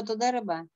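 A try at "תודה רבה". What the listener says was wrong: молодец.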